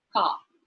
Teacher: in received pronunciation, the R is silent. So a word like CAR, car, is pronounced as car.